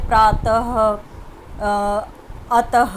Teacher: अयोगवाह जो है उसको विसर्ग के रूप में प्रयोग करते हैं जिसका उच्चारण ह होता है